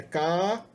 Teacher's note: uma vogal longa e tom alto